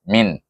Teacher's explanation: Jadi kita baca dengan izhar halqi pada min, mim ya nun, satu harakat saja